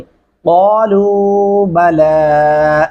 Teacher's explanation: लाम को लंबा किया जाएगा वाव के ऊपर जज़म आने की वजह से।